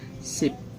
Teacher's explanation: Sip terdiri dari konsonan kelas atas S, ditambah vokal I, ditambah konsonan akhir bobaimai, yang jika di akhir berbunyi P, yang merupakan akhiran mati. Jadi nadanya rendah ya, low. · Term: low tone